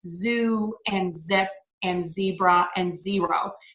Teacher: it is um sort of a strong longer voiced sound in english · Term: z sound